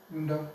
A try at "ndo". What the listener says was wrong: Ndo. Very good. You're fine. Good job.